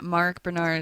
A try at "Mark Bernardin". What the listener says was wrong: You're missing the last syllable of his last name, though. It's Mark Bernardin.